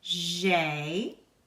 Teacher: Your A and I together make an A sound.